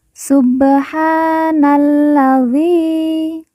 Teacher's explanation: Na langsung masuk huruf lam alif tidak dibaca kemudian karena La ini bertasdid maka kita baca ditekan dan ditahan